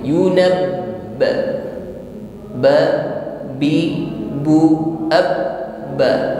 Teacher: Suara kita tertahan sejenak karena makhrajnya tertutup dengan sempurna. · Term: sifat syiddah